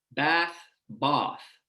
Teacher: many British English varieties use a vowel that's produced further back in the mouth. The tongue is retracted and low, taking you from my pronunciation, bath, to something more like bath.